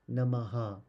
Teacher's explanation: visarga in this case it is an a sound and then we just stretch the sound out after the h sound and we make it double so nama becomes namaha when there is a ending of that